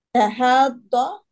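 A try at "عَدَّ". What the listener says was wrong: Bukan pakai ha, pakai ain.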